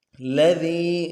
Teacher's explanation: دیں گے، هو اگلے لام کو نرم سے ادا کرنا ہے، دال کو یا کے ساتھ ملانا ہے، دال کو باریک کریں گے